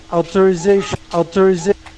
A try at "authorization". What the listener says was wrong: And the th kind of came out like a T. So I would say author, authorization, and they kind of did outer. So I would say author, they kind of did outer, authorization instead of authorization.